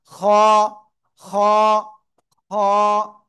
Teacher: গইন না, এটার নাম খ। গলার শেষ ভাগ থেকে এক আলিফ টেনে মোটা আওয়াজে পড়বো